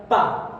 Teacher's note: देखिए दोनों ओठों का प्रयोग हो रहा है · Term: ओष्ठ